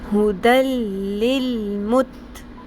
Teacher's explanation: لام یا را آ گیا تنوین کے بعد، یعنی دو زبر دو زیر دو پیش کے بعد، تو وہاں پر ہم نے نون کی آواز کو سائلنٹ کر لینا ہے. نون ساکن، جو تنوین کی نون ساکن کی آواز ہے اس کو بیچ میں نہیں ادا کرنا. ٹھیک ہے، ڈائریکٹ اگلے لام اور را کے ساتھ ہم نے جوڑ دینا ہے.